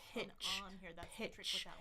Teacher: You can feel the air coming out with the P. Watch that short I sound. And then you stop it and give some friction.